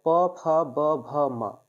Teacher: प वर्ग का जो उच्चारण स्थान होता है वह ओष्ठ से होता है